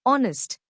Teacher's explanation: Explanation: although honest starts with H, a consonant, the H is silent here, so the word begins with a vowel sound